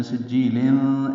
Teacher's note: سجیل مد عارض سکون میں یا ساکن کے بعد لام آنے کی وجہ سے بنی ہے، کیونکہ لام کو ساکن کیا، دو زیریں ختم کی ہیں. تنوین کے بعد فا آنے کی وجہ سے ملانے کی صورت میں سجیلن اخفاء